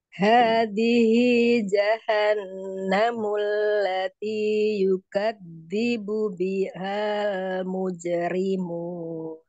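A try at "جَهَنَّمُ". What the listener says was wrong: Bagus. Tinggal nun tasjidnya. Jahannamul.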